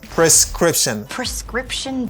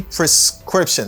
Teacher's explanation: Scription, c'est syllabe qui accentue.